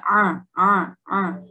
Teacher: huruf Ain mempunyai sifat tawasuth ya tidak terlalu kuat dan tidak terlalu lemah juga